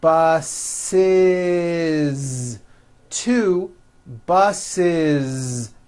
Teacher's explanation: the last sound you hear is that voiced zee